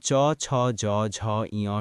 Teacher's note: তালব্য বা অগ্রতালুজাত ধ্বনি জিহ্বার অগ্রভাগ তালুর সামনের অংশে স্পর্শ করে উচ্চারিত হয়